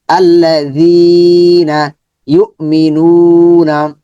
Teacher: জালের উচ্চারণ কিভাবে হবে, মাখরাজ মনে রাখতে হবে, জিহ্বার আগা উপরে দাঁতের আগাতে নরম সাউন্ড হবে